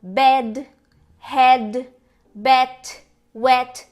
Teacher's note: A tua língua tá mais baixa e é o mesmo E de Eva, ele é um pouquinho diferente, mas muito parecido.